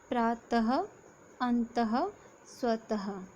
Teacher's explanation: इनको उच्चारण करते समय ह की ध्वनि हमें सुनाई देती है